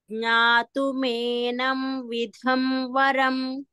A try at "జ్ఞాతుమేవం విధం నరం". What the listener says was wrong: మీరు జ్ఞాతుమేనం అని చదివారు అందుకనే మేవం కరెక్ట్ చేస్తున్నాను